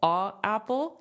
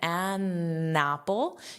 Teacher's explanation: Because the only reason why we change a to an is because it's easier for pronunciation if the next word is a vowel, starts with a vowel, it's easier to say an an apple than a apple. A apple, you have to pause, but an apple, you can connect it.